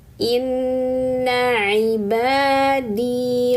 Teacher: Nah, nunnya bertasydid. Gunahkan tahan dan dengungkan tiga harakat.